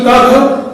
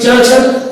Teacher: इन ध्वनियों के उच्चारण में स्वर तंत्रियां कसी हुई, तनी हुई नहीं होती, अतः इनके उच्चारण में वैसा कंपन नहीं होता जैसा घोष ध्वनि के उच्चारण में होता है। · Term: अघोष ध्वनियां